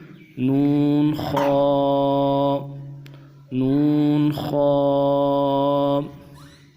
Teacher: نون کو کھینچیں گے، نون خا، خا کو بھی موٹا پڑھیں گے۔ خا کو ادا کرتے ہوئے ہونٹوں گول نہیں کرنا چاہیے۔